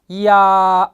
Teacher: 야는 이하고 아가 합해진 거예요. 이하고 아가 합해진 이중모음이죠.